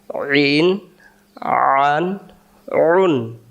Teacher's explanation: আইন অক্ষর হলকের মধ্য থেকে একটু চেপে পড়তে হয়